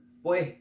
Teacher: acá en Bolivia, en Santa Cruz de la Sierra, tendemos a cambiar la S por la J. Cuando decimos pues, por ejemplo, y reemplazamos siempre constantemente la S por la J.